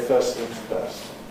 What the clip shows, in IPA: ˈfɜːs θɪŋz ˈfɜːst